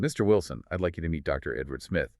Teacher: The notes point out the rising intonation on Mr. Wilson.